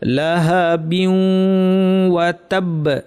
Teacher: আমার যদি নামটা কঠিন লাগে নাম মনে রাখার দরকার নেই, কিন্তু খেয়াল রাখবেন বিন ওয়া ছিল, বিন ওয়াকে আমরা বিউ ওয়া পড়বো। বিউ একটু নাকি করে পড়বো, তারপর ওয়া বলার সময় নাক শেষ